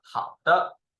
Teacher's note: For the neutral tone, we will go up and short.